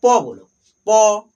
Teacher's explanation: प वर्ग में हमारा प बोलो। प ये दोनों होठ आपस में क्या हो रहा है? जो है चिपक रहा है। तो प हमारा जो है ओष्ठ से बोला जाता है। ओष्ठ यानी हंठ।